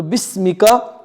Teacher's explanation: مخرج سین ہے، سیٹی کی آواز آئے گی